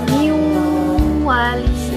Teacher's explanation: Dalam kalimat niwali terdapat nun sukun bertemu dengan waw yang harus dibaca waw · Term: idgham bigunnah